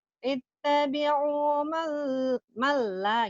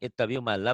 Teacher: Kalau idgham bila gunah jangan ditahan. Malla, idgham bila gunah. Dilebur tapi tanpa ditahan.